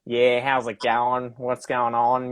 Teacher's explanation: They speak more up in the nose. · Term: more nasal